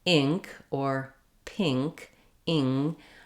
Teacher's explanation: because my tongue is high in the back for my getting ready for my ng sound, it may lift my I sound as well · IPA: ɪ